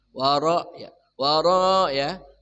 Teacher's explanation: Rnya bergetarnya antara satu sampai dua ya. Namanya takrir ya. Bergetarnya rlebihan ya.